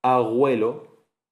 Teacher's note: cuando se velariza, se pronuncia abuelo, la estás llevando hacia atrás